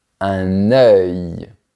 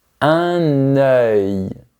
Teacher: C'est le même son que pour le mot cœur mais à la fin tu fais un léger son de i très rapide.